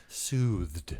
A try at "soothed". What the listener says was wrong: Soothed. Well, you're saying it with a D. I'm saying soothed.